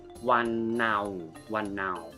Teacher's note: now is a flat tone